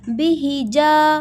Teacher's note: ہا حلق کے درمیان سے ادا ہوگا